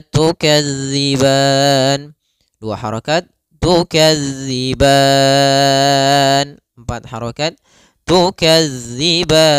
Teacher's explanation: kita boleh memanjangkan sepanjang 2 harokat atau 4 harokat ataupun 6 harokat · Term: mad arid lis-sukun